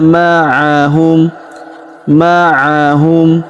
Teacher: huruf ma kita panjangkan dua harakat karena terdapat alif di depannya.